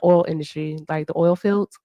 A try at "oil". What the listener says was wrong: It's pronounced oil, not all.